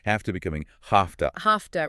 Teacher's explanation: the v sound changes to an f sound before the t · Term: Voicing assimilation